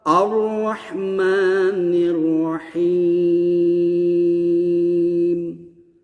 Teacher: Ar-Rahmanir. Itu nirnya tuh harus tipis. Pertama rohnya tebal.